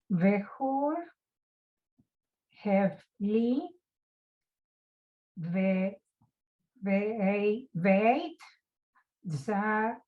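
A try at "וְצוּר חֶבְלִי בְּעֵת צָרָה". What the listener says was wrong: Exactly. Good.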